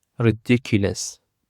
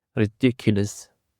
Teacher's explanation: Ridiculous consists of four syllables and the stress is on the second syllable.